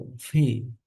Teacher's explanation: ও ফি ফি উচ্চারণটা আসলে পরের প এর মতো হবে না ফ এর মতো হবে না হবে দুই ঠোঁটের মাঝখান থেকে দুইটার মাঝখানে প এবং ফ এর মাঝখান থেকে ফি ফি ফেউ